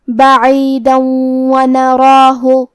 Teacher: اگر ہم یہ آیت کو اگلی آیت کے ساتھ ملا کے پڑھیں تو حرف الواو کلمت ونراہ حروف الادغام بغنہ میں سے ہے، اور ادغام کا معنی ہے حرف کو حرف میں داخل کرنا، تو ہم یہ تنوین کو واو میں ملا کے غنہ اور تشدید کے ساتھ یہ حکم کو ادا کریں گے